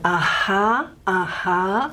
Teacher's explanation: Typically in the middle of a word, if we say aha, aha, it's a little bit more heading towards the voicing side of H. So this is a voiced H, if you like, all right.